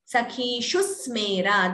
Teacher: there is a dvitvam, doubling sound. That sa is doubling.